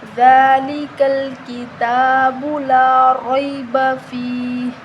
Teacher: اب رو کے اوپر زبر ہے تو ہم رو کو موٹا پڑھیں گے، ٹھیک ہے۔ رو کے آگے یا لین ہے تو ہم اس کو بغیر جھٹکا دیے، بغیر کھینچے نرمی کے ساتھ پڑھیں گے